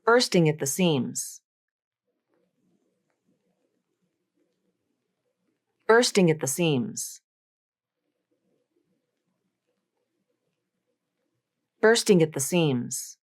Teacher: the T in at is almost always going to be a stop T these two words are also going to be unstressed and as